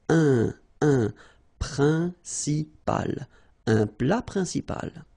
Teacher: En, remember, it's nasal, it goes in your nose.